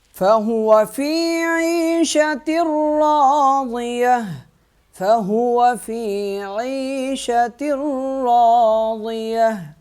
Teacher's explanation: تا جو ہے اس را کے ساتھ مل جائے گا اور را کو ایک الف کے برابر کھینچ کے پڑھیں گے، ضاد کو موٹا پڑھیں گے